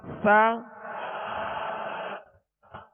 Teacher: سا کو نرمی سے پڑھیں گے, اس میں سیٹی کی آواز بالکل پیدا نہ ہو, نرمی سے ادا کریں گے.